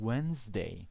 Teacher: the D is not being pronounced, it's silent